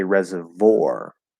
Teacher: You can drop the W sound and say reservoir, and just go from V to an R colored O.